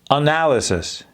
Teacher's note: Barely do we have the N or the L audible at all in that word.